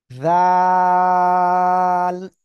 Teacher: জিহ্বার আগা, সামনের উপরে দুই দাঁতের আগায় লাগাবেন। এইভাবে লাগে আপনার উচ্চারণ করতে হবে।